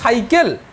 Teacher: আমি যদি বলি সাইকেল, সাইকেলে উচ্চারণ করো, তাহলে জিভটা এসে দাঁতে লাগছে। তুমি সাইকেলটা জিভটা দাঁতে না লাগিয়ে উচ্চারণ করো, সাইকেল। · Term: দন্তেস্য